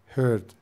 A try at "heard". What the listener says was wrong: Not hurt. It's not hurt. It's heard. Okay, you've got a problem with the D and the T at the ends of the words. sound the same with T and D. and heard.